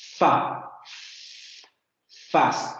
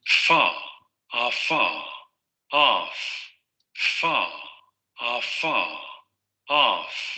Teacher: En este caso, la obstrucción se va a dar entre los labios y los dientes. Fa, fas, y va a ser un fonema sordo, es decir, no van a vibrar las cuerdas vocales, ¿sí? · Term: Sorda labiodental fricativa